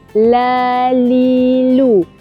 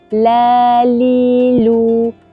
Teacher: Sebab tu kita baca disebabkan perjalanannya terhalang oleh lidah. Lidah kita naikkan, nak sebut lam tadi, bila kita naikkan lidah, angin daripada dalam tadi dia akan melencong ke kiri dan ke kanan. Jadi dia keluar melalui kiri dan kanan lidah. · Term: sifat al-inhiraf